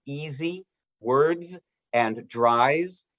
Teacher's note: in some words especially at the ends of words s sounds like a z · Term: voiced s sound